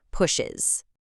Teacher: you simply must add that extra schwa sound. Otherwise, the word is just way too physically hard to pronounce.